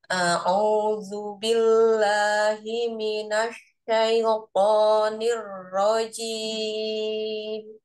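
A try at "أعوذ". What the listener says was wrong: Keluarkan aja ujung lidahnya ya, nempel di seri depan. A'udzu. Jadi supaya gak ju gitu.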